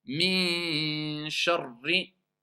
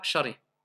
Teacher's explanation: Sharri, il y a une shidda. Il faut rester plus longtemps.